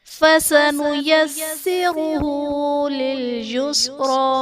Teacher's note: فَسَنُيَسِّرُهُ میں را پر پیش ہے، تو را کو پر پڑھا جائے گا۔